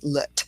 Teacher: we have a schwa or that light I sound at the end with lut